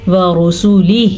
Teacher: اب آپ دیکھ رہے ہیں میں نے ورسول نہیں پڑھا، ورسول ہی پڑھیں گے تو غلط، بڑی غلطی، کیونکہ لکھا ورسول ہی ہے. ورسولہ، مد کا دھیان رکھنا ہے. یہ مد 3 الف کے برابر لمبی کی جاتی ہے. تقریباً اس کو لمبا کرنے میں 2 سے 2.5 سیکنڈ لگتے ہیں، لیکن یہ را جو ہے ہمیں پر پڑی جائے گی کیونکہ اس را کے اوپر پیش ہے.